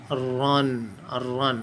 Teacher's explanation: را الف دو زبر رن، باہر کی طرف ایک نرم سافٹ آواز جو ہے رن رن، ایک وائبریٹ کرتی ہوئی آواز را کی، ایک جنبش کھاتی ہوئی آواز را کی